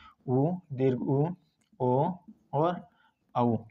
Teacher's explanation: ये चार हमारे वृत मुखी स्वर होते हैं